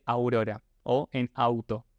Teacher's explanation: la U, con el gorrito, tiene un sonido breve y diptongado, como por ejemplo la U de aurora o en auto, ¿no?